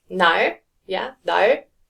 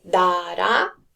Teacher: So like 날, yeah, 날 is more L sound, but 따라 is more towards the R sound. So as a 받침, more towards the L sound, and as a first consonant, more towards the R sound